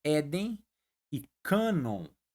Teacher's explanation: Éden e cano a sílaba tônica é a primeira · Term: paroxítona